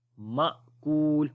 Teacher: حمزہ کے اوپر اب جزم آ گئی ہے تو جھٹکا دے کر پڑھیں گے، مأکول، کو لمبا کریں گے، واو مدہ ہے، جب رکیں گے تو مد عارض ہو جائے گی، تو پڑھیں گے کعصف مأکول، اور پوری آیت ہے فجعلہم کعصف مأکول، اور یہاں پر یہ رکوع کا سائن ہے۔